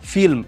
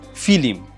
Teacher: সংযুক্ত ব্যঞ্জন ধ্বনির মাঝখানে একটা স্বরধ্বনি চলে আসে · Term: স্বরভক্তি